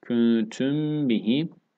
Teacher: Mimden sonra B gelmiş. Dudak ihfası. İhfa-i şefevi.